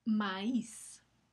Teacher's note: Esto nos indica gráficamente que la I no va a formar un diptongo con la A, sino que está en una sílaba separada, es hiato